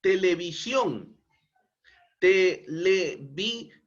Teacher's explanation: s otro ejemplo televisión televisión no es una palabra aguda porque el mayor impulso de voz se encuentra en la última sílaba